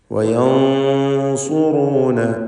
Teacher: സക്നത്തായ നൂനിനെ ശേഷമുള്ള സ്വാദ് വന്നതുകൊണ്ട് ഇഖ്ഫാ ഹഖീഖി നൽകി മറച്ചു മണിച്ച് തഫ്ഖീമോടുകൂടി ഉച്ചരിക്കണം. സ്വാദ് ഇസ്തിഅലാഇൻ്റെ തഫ്ഖീം ചെയ്യേണ്ട അക്ഷരമാണ്, സ്വരഭാരത്തോടെ തടിപ്പിക്കേണ്ട അക്ഷരമായതുകൊണ്ട് മണിക്കലിലും ആ തടിപ്പിക്കൽ തഫ്ഖീം ഉണ്ടാവണം.